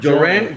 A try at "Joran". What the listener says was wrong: Joran. You gotta roll the R.